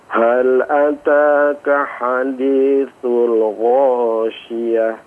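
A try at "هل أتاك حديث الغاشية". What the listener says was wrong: Ha yang terakhir tak marbutahnya dilepas ya. Ghasyiyah. Syiyah. Ha-nya munculkan.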